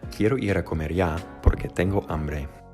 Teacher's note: Notice that the pitch gradually descends over the entire sentence. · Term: descending pitch